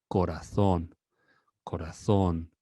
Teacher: You extend the O, the last one, and that makes the last one to be or to stand out amongst the other vowels.